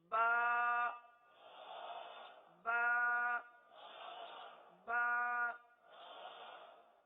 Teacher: یہ جو ہم حرف ادا کر رہے ہیں ایک الف تک کھینچ کے پڑھ رہے ہیں